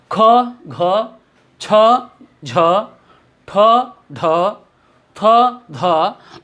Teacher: दूसरा अंतर देखेंगे हम कि जब हम महाप्राण का उच्चारण करते हैं ख, घ, छ, झ, ठ, ढ, थ, ध, तो उच्चारण जब करते हैं तो यह हकार यानी जब इसको उच्चारण करते हैं तो इसके उच्चारण का अंत ह से होता है। हकार अधिक मात्रा में जो है ध्वनि निकल रही, आवाज वायु निकल रही है, मैंने हवा निकल रही है और इसमें परिश्रम भी अधिक हो रहा है।